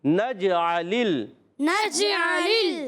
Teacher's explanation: حرف شجریہ میں جیم شین یا ہوتے ہیں، اور جیم حرف قلقلہ میں بھی ہے. قلقلہ اس لیے کہ جیم ساکن ہے، آواز دوڑ کر آئے گی